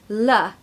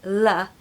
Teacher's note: an L that happens in the front of your mouth not a dark L which is further back L you can literally see my tongue making that sound L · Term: bright L